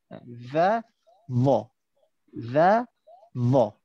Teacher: Pastikan bila kita baca huruf za, hujung lidah kita berada dekat luar.